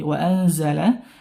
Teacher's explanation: Nun bertemu Zai nah dibaca ikhfa Hakiki